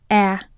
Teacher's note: The /ӕ/ is lax so it is short in duration. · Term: vowel sound /ӕ/